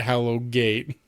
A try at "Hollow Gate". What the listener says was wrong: Hollow Gate, not Hallow. It's Hollow. Instead of making it Hallow Gate, it's Hollow Gate.